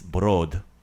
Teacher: give me a lighter D sound like more at the front of your mouth